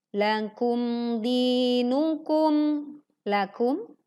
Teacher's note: lakum ada mim sukun, tekan tanpa memantulkan, lakum dinukum, di-nya 2 harokat, lakum dinukum, tekan mim sukun tanpa memantulkan, waliyadin, din panjang 2, 4 sampai 6 harokat.